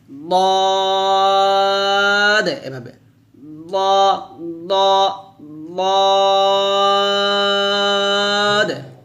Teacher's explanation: 7 নং মাখরাজ জিহ্বার গোড়ার যে কোনো এক দিকের কিনারা উপরের মারি দাঁতের গোড়ার সঙ্গে লাগিয়ে দদ উচ্চারণ করতে হবে মোটা করে। অর্থাৎ দদ যখন আপনি উচ্চারণ করবেন জিহ্বার গোড়ার যে কোনো এক কিনারা উপরের মারি দাঁতের গোড়ার সঙ্গে লাগাবেন।